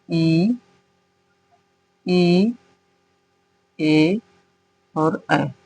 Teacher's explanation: अग्र स्वर मतलब जो जीहवा के अगले हिस्से पर अगले हिस्से से जो उच्चारण आता है और जो स्वर बनते हैं वे अग्र स्वर होते हैं जिह्हवा की उच्चारण स्थिति के आधार पर जिनमें से इ ए और ऐ यह जीहवा के अगले हिस्से से उच्चारित होते हैं।